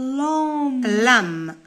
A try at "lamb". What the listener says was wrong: lamb. اوكي قلنا البي مور الان ما ننطقوهاش.